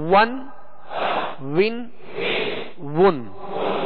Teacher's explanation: دونوں ہونٹوں کی گولائی سے واو ادا ہوتا ہے